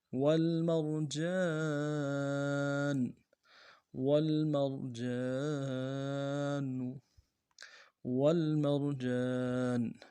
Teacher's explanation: واو کو لام کے ساتھ ملائیں گے اور میم کو را کے ساتھ ملانا ہے، را کو موٹا کریں گے، جیم کے ساتھ الف مدہ ہے ایک مقدار میں کھینچیں گے، نون کو لام سے ادا کریں گے.